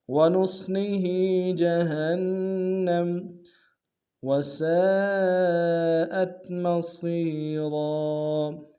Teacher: سین کی سالف مدہ ہے اور مد متصل ہے، کم سے کم 3 امتداد میں کھینچیں گے